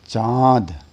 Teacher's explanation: इनका उच्चारण करने में नाक व मुंह दोनों की सहायता लेनी पड़ती है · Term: अनुनासिक वर्ण